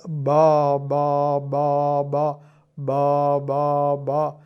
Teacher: ഇങ്ങ് വരും പുറത്തേക്ക് വരും അതേസമയത്ത് ബാ ബാ ബാ ബ എന്ന് പറയുമ്പോൾ സ്വനപാളികൾ തമ്മിൽ ചേർന്നാണ് ഇരിക്കുന്നത് പക്ഷേ ചേർന്നു വിടർന്നു ചേർന്നു വിടർന്നു ചേർന്നു വിടർന്നു അങ്ങനെ സ്വനപാളികൾ ഇങ്ങനെ കമ്പനം കൊള്ളും വൈബ്രേറ്റ് ചെയ്യും എന്ന് വേണമെങ്കിൽ ഇംഗ്ലീഷ് വാക്ക്